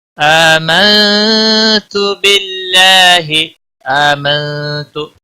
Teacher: آمنت باللہ، آمنت حمزہ کے اوپر کھڑی زبر ہے، ایک الف کے برابر کھینچ کر پڑھیں گے۔ نون ساکن کے بعد حروف اخفا کا تا آیا ہے، اس لیے اخفا حقیقی ہوگا، نون ساکن پر گنہ ہوگا۔ باللہ، اللہ کے لام کے پچھلے حرف کے نیچے زیر ہے، اس لیے اللہ کا لام باریک پڑھا جائے گا۔